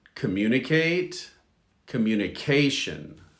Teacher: the stress is on the ca of communication